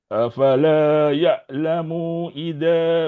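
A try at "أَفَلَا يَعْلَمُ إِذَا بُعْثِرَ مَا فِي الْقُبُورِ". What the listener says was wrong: Mu jangan panjang. Afala ya'lamu idza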